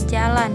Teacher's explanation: Huruf J merupakan konsonan laminopalatal yang dihasilkan oleh bagian tengah lidah. Lamines sebagai artikulator dan langit-langit keras.